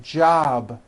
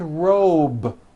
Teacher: job ends in a B, which is a voiced sound. Job. It's not jop with an unvoiced P. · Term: voiced B ending